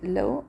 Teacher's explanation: لو حروف لین دی، پر لام فتحه ده، پر واو سکون دی. لو نرم بیا وایو